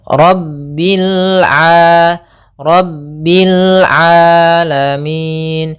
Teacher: jangan sampai merubah huruf ainnya menjadi hamzah. Banyak yang terjadi kesalahan dalam pelafalannya, yaitu mengganti dengan alif atau hamzah.